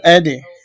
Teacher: আলিফ দাল জবর আদে, এখানে কলকলা করতে হবে